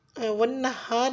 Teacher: वन्नहार में वाव पे होंठों को गोल करते हुए नून मुशद्दिद पे अच्छी तरह से गुन्ना करना है